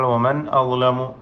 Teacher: സാക്കിന നൂന് ഇൽഹാർ ചെയ്ത് ഉച്ചരിക്കണം, വെളിവാക്കണം. ഇൽഹാർ ഹൽഖി എന്നാണ് അതിന് പേര് പറയുക.